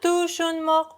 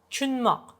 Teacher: And tushunmoq usually can be heard like chunmoq. Not tushunmoq, but chunmoq, like ch sound. Chunmoq. Like two syllables decrease to one. Chunmoq. Usually in Tashkent.